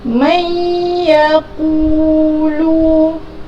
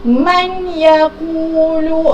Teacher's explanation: Kita memasukkan bacaan nun mati ini ke dalam huruf idgham, iaitu ya. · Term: idgham bi gunnah